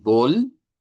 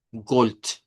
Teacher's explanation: Cambio de consonante vibrante por consonante no vibrante.